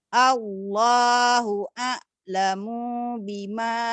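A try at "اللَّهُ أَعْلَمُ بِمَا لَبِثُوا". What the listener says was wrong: panjang pendeknya belum pas.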